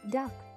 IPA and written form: dʌk (Duck)